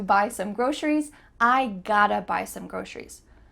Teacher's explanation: Often, the word to becomes a.